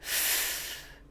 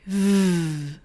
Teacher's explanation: When I say f, you can hear air coming out, but my voice is off. When I say v, you can hear air coming out and there's a vibration, which means that my voice is on. We can also call these types of sounds voiceless and voiced. · So what we're saying with these two sounds is that the voice being off or on is the main difference between them